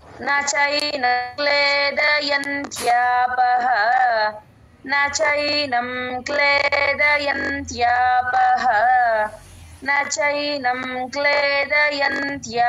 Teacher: అక్కడ య తర్వాత సున్నా ఎన్ లా పలకాలి